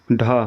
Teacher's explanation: ढ यह ट वर्ग का चौथा सघोष और महाप्राण वर्ण है।